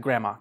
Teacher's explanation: Native speakers don't really say the “D,” you just say a “gramma.”